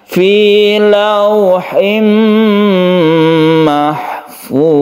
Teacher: Dha itu bukan huruf qalqalah, jadi jangan dipantulkan.